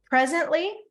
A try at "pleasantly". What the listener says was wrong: With an L. With an L right next to the P.